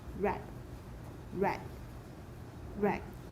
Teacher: So glottal stop plus a p plus a final release.